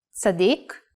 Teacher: The letter Tsadi, if pronounced while putting the emphasis in the last syllable, Tzaddik means righteous person or even saint